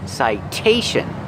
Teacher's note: The T makes a T sound because it's before the stressed vowel.